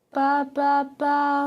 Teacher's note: elle n'a plus du tout d'air qui passe par le nez